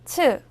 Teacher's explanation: 즈를 소리낼 때와 같은데요 보다 바람을 더 많이내는 소리예요